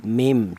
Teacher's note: huruf nun ini cara bacanya diganti dengan huruf mim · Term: iklab